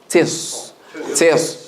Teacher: So make the back of the tongue rise when you pronounce the Sad. And the corners of the lips come closer together.